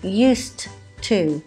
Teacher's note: You can hear a t sound instead of the ed as it's spelt